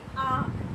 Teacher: अनुनासिक ध्वनियों का उच्चारण करते समय हवा नाक और मुंह दोनों से आती है. जब हम इनका उच्चारण करेंगे व्यंजन के साथ तो इनका उच्चारण स्थान नाक और मुंह दोनों से होकर आती है, इसलिए हम इन्हें अनुनासिक कहते हैं.